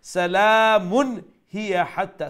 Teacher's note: So the rule is if after a nun sakin or a tanween appears any 6 letters of the throat letters, then that nun sakin and that tanween would be pronounced with izhar, with clarity. So no nasal sound.